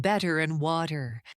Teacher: Americans use the flap t in everyday words like better and water